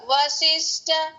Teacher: వశిష్ట ఇక్కడ మహాప్రాణం లేదు కాబట్టి లైట్ గా